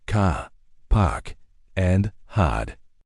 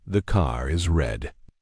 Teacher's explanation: the R is silent unless it links to another word like in the car is red. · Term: non-rodic